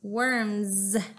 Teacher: ends with the letter S but it sounds like a Z we turn our voice on